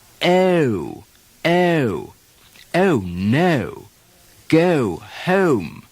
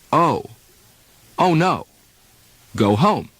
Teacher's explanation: it's now a three-stage o instead of a two-stage o